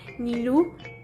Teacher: belakang lidah naik menempel pada langit-langit lunak dan kemudian udara dilepas melalui hidung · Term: Konsonan nasal velar